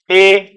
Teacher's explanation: इन दो वर्णों का उच्चारण स्थान क्या है कंठ और तालू